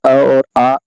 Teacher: कंठ का अ और आ और विसर्ग और अह, ये कंठ के उच्चारण स्थान है